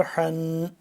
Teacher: اب ح کے اوپر آ گیا دو زبر، یعنی کہ تنوین آ گئی، تو اس میں کو ہم تھوڑی دیر کے لیے ناک میں آواز لے جائیں گے